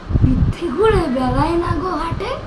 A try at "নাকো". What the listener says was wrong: না গো নয় না।